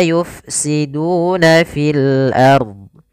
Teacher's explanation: ada mad tabi'i, dhammah bertemu waw, 2 harakat